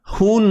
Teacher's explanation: ha simpul, jangan pedaskan, biasa je di pangkal kerongkong kita, ha. Biasa istilahnya ha besar kan, ha besar.